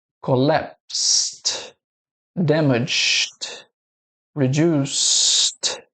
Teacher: Então, sinta a diferença tocando as cordas vocais quando você fala essa palavra aqui, ó, collapsed, damaged, reduced. Você tem o final desses verbos aqui sem a vibração das cordas vocais. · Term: som de T